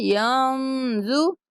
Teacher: نون ساکن آ رہا ہے یہاں پہ ہم غنہ کریں گے